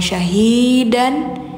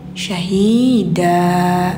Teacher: Setiap tanwin fathah posisinya di akhir, maka suara n-nya hilangkan digantikan ke bunyi panjang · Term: mad iwad